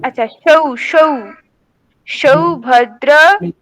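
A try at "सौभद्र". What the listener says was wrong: হচ্ছে না, সকারটা উচ্চারণ হচ্ছে না আপনার। দেখুন সকারটা কোথা থেকে উচ্চারণ হওয়ার কথা? দন্ত থেকে। আপনি কি দন্ত থেকে করছেন সেটা? আপনি তো করছেন না। হ্যাঁ, ওই তকার যেখান থেকে উচ্চারণ হচ্ছে সেখানেই সকার বলুন।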